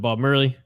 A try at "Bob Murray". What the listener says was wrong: you keep saying Bob Murray, and it's really bothering me. Like you're mixing Bob Marley and Bob Murray together.